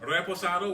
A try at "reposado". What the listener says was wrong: Yeah, you gotta roll your R's on me.